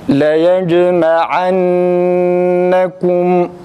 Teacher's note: Kum zamirinde kaf harfini okuduğumuzda dudak önde, mimde hemen derhal dudak geri çekilir. Mimin cezminde geride, kaf harfinin ötüresini ise ileride. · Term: Dudak hareketleri